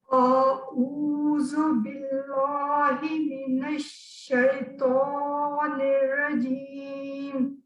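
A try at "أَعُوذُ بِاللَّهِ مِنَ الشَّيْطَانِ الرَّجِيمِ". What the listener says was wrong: اور ابھی بھی جیسے اعوذ، ٹھیک ہے؟ عین اور حمزہ کو الگ الگ کرنا ہے.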